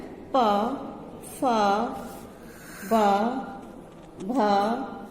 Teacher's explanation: पे वर्ग में प फ बा भा में, और ये इनका उच्चारण स्थान होता है होठ, ओष्ठ से